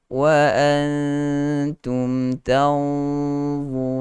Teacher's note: nun mati bertemu dengan dha ada sifat yang tebal, sifat isti'la dan itsbaq. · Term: gunah